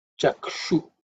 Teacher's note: This ukshu is actually the cerebral sh. So the tongue should ideally be bent and pointed upwards.